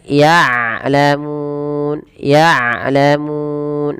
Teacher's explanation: jangan sampai dibaca dengan ya'lamun dengan hamzah, tapi dengan ain